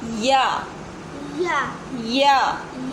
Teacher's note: या मुंह के खाली हिस्से से अदा होता है